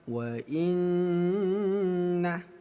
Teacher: Ada nun sukun bertemu huruf nun ayah bunda. Ini kita baca dengung ya. Wa in, dengungkan dua ketukan. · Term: idgham bi gunnah